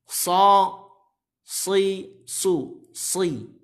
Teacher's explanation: shadnya ini adalah termasuk huruf isti'la. Maka dia harus tebal. Meskipun dalam keadaan kasrah sekalipun tebal.